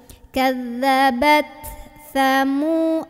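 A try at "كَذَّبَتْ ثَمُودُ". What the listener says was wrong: sa sa. Nah, ini ujung lidah ketemu ujung gigi. Ujung lidahnya digigit sa sa.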